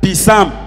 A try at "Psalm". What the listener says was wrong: The B there is silent.